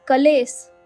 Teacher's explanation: संस्कृत क्लेश मधला क आणि ल हे कठीण जोडाक्षर तोडण्यासाठी तिथे स्वर घातला गेला आहे